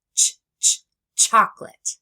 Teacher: I round my lips and I pull back my tongue. I stop the air and then let it out quickly in a burst like in the beginning of chocolate. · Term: ch sound